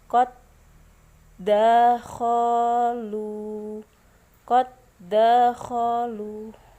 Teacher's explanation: da yang bersukun hilang tergantikan oleh da yang berharokat fathah. Maka dibacanya qad dakhalu. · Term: idgham mutamatsilain